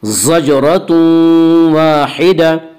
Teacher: ज़जरतुन वाहिदा में इदगाम बिल गुन्ना होगा। इसका कायदा यह है कि नून साकिन और तनवीन के बाद अगर हुरूफ यरमलून में से कोई हर्फ आए तो वहाँ पे इदगाम होगा।